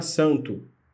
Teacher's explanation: N, ela não funciona nessa palavra como uma consoante, mas um nasalador, mais um nasalador da vogal anterior, que é A.